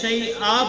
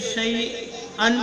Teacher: وقف کریں گے تو شیئا پڑھیں گے، اگر وقف نہیں کریں گے تو شیئن پڑھا جائے گا